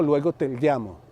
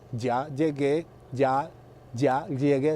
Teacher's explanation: Fíjese, verá que esa elle la pronuncié casi igual a una L